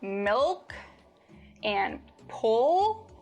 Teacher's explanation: In contrast to the light L, when you produce the dark L, the back of your tongue bunches